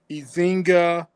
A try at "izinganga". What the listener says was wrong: Almost there. Izinganga. Just add nga at the end.